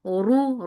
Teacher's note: ra is heavy for dhamma circle lips, and the sound is short.